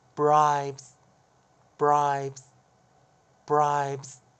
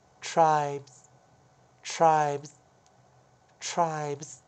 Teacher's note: 那记得▁S▁遇到▁B▁要浊化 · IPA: [aɪbz]